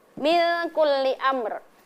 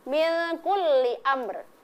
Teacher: Jadi di ujung lidah itu harus dinampakkan huruf ro-nya ya, walaupun ro-nya sudah termasuk dalam hukum mad arid lis sukun, tetapi tetap dinampakkan ya, min kulli amr ya.